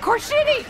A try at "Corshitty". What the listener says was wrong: Sounded like you said car shitty.